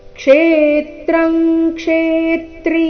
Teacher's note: ಆಘಾತಗಳ ಮೇಲೆ ಗಮನ ಕೊಡಬೇಕು ಕ್ಷೇತ್ರಂ ಕ್ಷೇತ್ರಿ ಈ ರೀತಿ ಇಲ್ಲ ಕ್ಷೇತ್ರಂಗ್ ಕ್ಷೇತ್ರಿ ಎರಡು ಶಬ್ದಗಳಲ್ಲಿ ಕ್ಷೇ ಈ ಅಕ್ಷರದ ಮೇಲೆ ಆಘಾತ ಬರಬೇಕು ಕಾರಣ ಮುಂದೆ ತ್ರ ಮತ್ತೆ ತ್ರಿ ಸಂಯುಕ್ತ ಅಕ್ಷರ ಇದ್ದ ಕಾರಣ ಕ್ಷೇತ್ರಂ ಕ್ಷೇತ್ರಿ